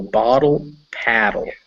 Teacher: the double t kind of becomes that tap